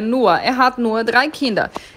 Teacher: Atenção para a pronúncia de nur, é como se tivesse um azinho no final